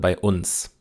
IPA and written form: baɪ̯ ˈʔʊns (bei uns)